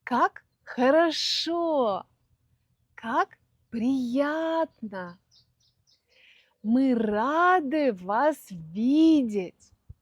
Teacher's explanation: Мы действительно тянем эти ударные звуки. Хотя, конечно, в разговорной речи, когда мы говорим очень быстро, этого так не слышно, но всегда это удлинение звука присутствует, то есть имеет место.